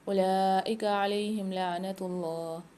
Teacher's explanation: اولئک علیہم لعنت اللہ، لام کے اوپر کھڑا زبر اور مد ہے، 5 سے 6 الف کی مقدار لام کو کھینچیں گے، واؤں کو سائلنٹ کر دیں گے۔ علیہم لعنت اللہ میں اللہ کے لام کو موٹا پڑھیں گے اور ساتھ میں کھینچ کے بھی پڑھیں گے۔